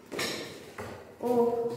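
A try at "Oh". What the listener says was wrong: Эч не звучит, да? Не ох.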